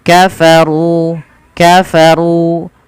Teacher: runya dibaca dengan tebal dan di sini ada Ro tafkhim karena ro berharakat damah kemudian di